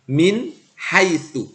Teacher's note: contohnya nun sukun bertemu dengan huruf H min Hai Tu maka nunnya harus dibaca dengan jelas Min tidak boleh didengungkan atau disamar-samar kan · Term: izhar halki, izhar halqi